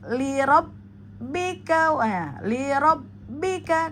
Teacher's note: pada lam bertasdid hanya di hentak lalu masuk lirabbika lirabbika. Kemudian pada bika itu juga jangan dipanjangkan ya karena hati-hati dengan jeda ya.